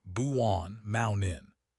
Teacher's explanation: We don't say the t. We stop the air in our throat. Buon mount in >> the glottle stop. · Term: glottal stop